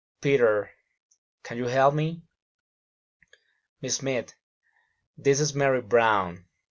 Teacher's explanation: Direct address. Rising intonation.